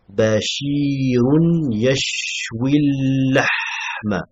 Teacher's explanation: On passe directement du ya au lam.